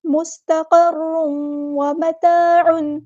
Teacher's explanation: ہے، ادغام مع الغنہ، یعنی ادغام ناقص ہو رہا ہے، مستقر، تنوین کی آواز کو واو کے اندر مکس کرنا ہے